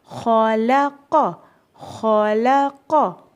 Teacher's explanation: لام جو باریک ہے وہ لام ان موٹے حروف کی وجہ سے موٹا نہ ہو جائے